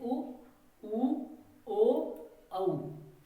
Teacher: जिनमें हमारे होठों का आकार वृत्त के आकार की तरह बने उनको कहते हैं हम वृत्तमुखी।